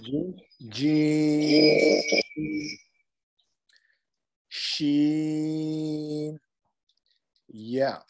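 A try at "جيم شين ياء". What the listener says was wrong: MashaAllah, very good.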